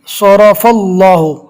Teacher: یہاں پر اللہ کے لام کو بھی پور پڑھیں گے، پور یعنی موٹا۔ اللہ کے لام سے پہلے زبر ہے اس لیے اللہ کا لام بھی پور ہوگا